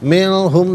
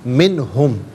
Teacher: منہم میں نون ساکن ہے، اس کے بعد ہا حرف علقی، تو نون ساکن کو اظہار کے ساتھ پڑھا جائے گا، غنّہ یا اخفاء نہیں کریں گے